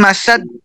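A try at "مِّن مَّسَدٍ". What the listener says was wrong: শেষে আরেকটু কলকলা করেন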